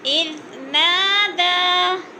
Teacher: اذ کی دال نرم پڑھی جائے گی، نا کو تھوڑا سا کھینچ کر پڑھیں گے